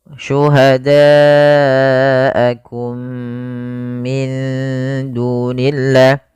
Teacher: Kemudian mim mati bertemu dengan mim. Ini merupakan bacaan idgham mimi, yaitu mimnya dimasukkan kepada mim yang kedua dan ditahan.